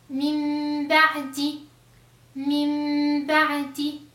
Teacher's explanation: Si vous voyez ici que je fais un mime, pas un noun, on ne prononce pas le noun, on la change, on la remplace avec une mime. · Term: iqlab